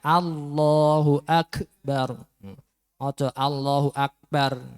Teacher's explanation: huruf k atau Kaf sifat hams itu harus keluar angin atau keluar nafasnya · ketika kafnya sukun itu harus keluar anginnya Allahu Akbar Allahu Akbar dan K ini untuk sifat hamasnya tidak